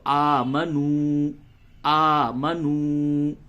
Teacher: اب یہاں پہ آمنو صرف نہیں بولیں گے، آمنو بول دیا تو غلط ہو گیا، کیونکہ نون پیش نو ہو جائے گا. یہاں پہ واو ہے تو واو کو تھوڑا سا کھینچ کر پڑھتے ہیں، واو حرف مدہ ہے